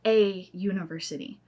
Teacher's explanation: you have a U sound, which starts with a Y. And a Y sound is a consonant sound.